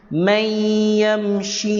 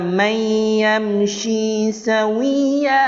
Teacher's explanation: Idgham bi ghunnah, memasukkan terus, tuan-tuan. Kita memasukkan dengan dengung.